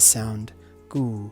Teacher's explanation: But in this case, all you have is the letter go with this symbol for oo underneath it, which takes away the inherent vowel o and replaces it with the vowel oo to give us the sound gu